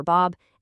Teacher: they all create that vibration in your larynx, making them voiced bilabials